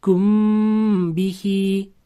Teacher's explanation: mim harfidan so'ng b harfi kelib qolsa, ushlab turib g'unna bilan o'qar ekanmiz